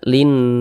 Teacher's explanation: Kita tahan suaranya, kita panjangkan 2 harokat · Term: gunnah